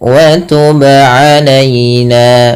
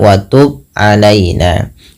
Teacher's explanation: Kemudian wa tub alaina, ba qalqalah, wajib memantul, tidak hanya sekedar wa tub alaina.